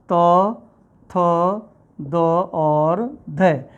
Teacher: दंत्य वो वर्ण कहलाते हैं जिसमें जीभ का अगला हिस्सा दांत में टच करता है। जीभ का अगला हिस्सा हमारा दांत में टच करेगा।